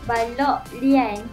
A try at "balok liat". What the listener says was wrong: Bukan lian. L-I-A-T.